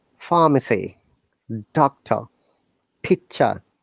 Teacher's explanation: You see, all these R's are silent.